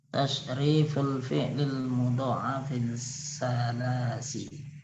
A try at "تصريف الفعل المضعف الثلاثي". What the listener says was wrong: Nah, ini bacanya bukan salasi tapi sulasi. Tasriful fi'lil mudha'af tsulasi.